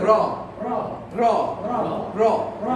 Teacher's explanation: এই তিনটার ক্ষেত্রে যে সমস্যা ভুলটা আমরা করি সেটা হলো যে র যখন উচ্চারণ করব ভয় বিন্দু র, তখন জিহ্বার আগা উপরের দাঁতের গোড়াকে ঠোকর মারবে।